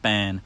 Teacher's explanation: before the letters m or n or or the sound um our vowels sort of get pushed through our nose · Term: nasalization of vowels